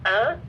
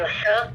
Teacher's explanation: Aqsa al-halak means far, far from the mouth, but near the voice box. This is from where 2 letters, hamza and ha, are recited.